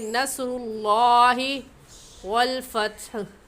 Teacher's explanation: और यहाँ पर लफ्ज़ अल्लाह से पहले पेश है तो लफ्ज़ अल्लाह को पुर यानी मोटा करके पढ़ेंगे। और मोटा करने का तरीका आपके दोनों होंठ गोल हो जाए